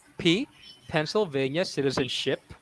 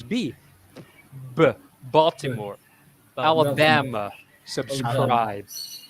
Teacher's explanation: so there's no vibration when we when we uh sound the p but when you add voice to p it becomes b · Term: voiced b